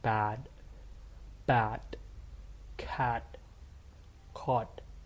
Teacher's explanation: whenever Americans and Canadians say is the a, their jaw really drops down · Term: short as